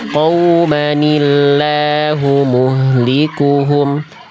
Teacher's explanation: jangan sampai ditekan nun-nya, jangan sampai gini, qaumanillahu jadi kayak ada semi-semi gunnah-nya